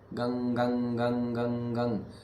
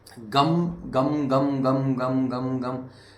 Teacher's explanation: अब गंग ग भी नहीं है, गंग बस गंग, यही नाक में अटक गई आवाज